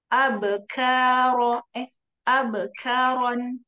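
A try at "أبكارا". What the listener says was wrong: Jangan abe, tapi abe. Jangan ada e-nya. Abe karon.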